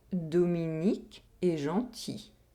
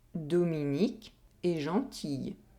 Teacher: one semi-vowel is added in the second sentence. There is a short [j] sound in the second sentence.